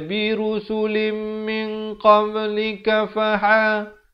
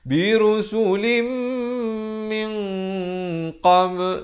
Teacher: Kemudian mim, di sini ikhfa dibaca dengan samar 2 harakat dengan tebal kerana qaf merupakan isti'la. Ramai orang silap di sini, dia tak bacakan 2 harakat.